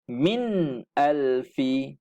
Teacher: nun mati Ini mesti di bunyi dengan izhar dengan jelas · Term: izhar halqi